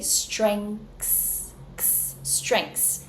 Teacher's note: one thing that we can do is actually drop the th completely and this is something that even native speakers might do